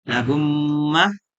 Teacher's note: Dinamakan syafawi karena mim keluar di antara kedua bibir. · Idgham syafawi ialah apabila mim mati bertemu dengan huruf mim, maka mim yang pertama diidghamkan dengan panjang 3 harokat atau 1,5 alif pada mim yang kedua, sehingga kedua mim tersebut menjadi satu huruf mim yang ditasdid